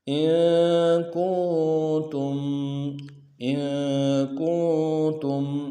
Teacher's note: حمزہ کو نون ساکن کے ساتھ ملانا ہے، نون ساکن میں غنہ کریں گے